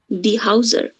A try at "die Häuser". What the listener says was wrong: Hauser না, এটার উচ্চারণটা হচ্ছে এই যে এই যে আ umlaut আর উ এটা হচ্ছে অয়। Die Häuser. Die Häuser.